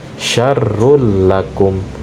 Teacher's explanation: sangat jelas tidak ada suara dengung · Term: bi ghairi gunnah